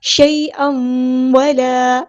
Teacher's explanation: شیئا ولا یہتدون, یہاں پہ دیکھیں یائلین آئی ہے, شیء, اور حمزہ کے اوپر 2 زبر ہے, 2 زبر کو ہمیں واو کے ساتھ مرج کر دینا ہے. ادغام ہو رہا ہے شیئا ولا, ادغام معلون, ادغام کرتے ہوئے ایک الف کے برابر رکیں گے.